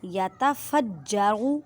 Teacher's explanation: جیم پر مضبوطی کریں کیونکہ جماؤں کے ساتھ کلکلا ہو رہا ہے، جیم مشدد ہے